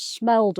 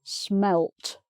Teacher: the vowel sound stays the same. It's just the D and the T that are different